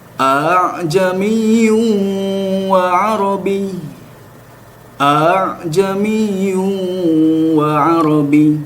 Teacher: Namun kata orang Arab ini susah, sehingga Imam Hafs ingin memudahkannya dengan mentashilkan kata a'jamiyun, hamzah yang kedua dijadikan sepertiga hamzah gitu dan lebih condong ke alif ya. Kita tahu bahwa hamzah itu berada di tenggorokan paling ujung aqsal halqi, sedangkan alif itu berada di al-jauf, rongga mulut.